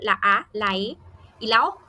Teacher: están las vocales abiertas, que para pronunciarlas debemos abrir bien la boca